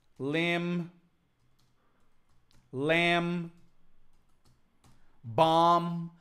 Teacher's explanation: limbs the B is silent we do not pronounce the be